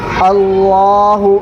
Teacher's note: لفظ اللہ کے لام سے پہلے یہاں پر زبر ہے، اس لیے لفظ اللہ کے لام کو پر پڑھیں گے